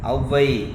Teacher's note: சொல்லின் முதலில் அவுகாரம் தனக்குரிய 2 மாத்திரை அளவிலிருந்து 1.5 மாத்திரை அளவில் ஒலிக்கும். 2 மாத்திரையிலிருந்து 1.5 மாத்திரை அளவில் குறைந்து ஒலிப்பது குறுக்கம் என்று சொல்கிறோம் இல்லையா? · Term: அவுகார குறுக்கம்